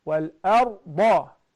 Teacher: Because the Ra is Sakina and it is preceded with the Alif and the Da. The Alif is thin, but because it's Fatha, so the Ra has to be fattened.